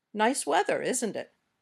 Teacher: We often use this falling intonation when we're just making conversation